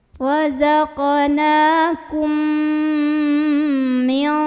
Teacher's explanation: mim yang sukun ini dileburkan ke mim kedua. Jadi kita langsung fokus lihat mim kedua sambil jangan lupa tahan dulu dengungannya. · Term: idgham mimi